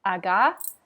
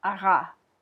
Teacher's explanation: when you say aga, your tongue hits kind of at the front of your mouth. And if you say ara, your tongue hits in the back of your mouth. And so to make that French r sound, you have to make the aga sound.